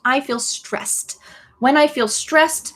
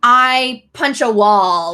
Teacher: make sure that when you say stress there's like a a T sound at the end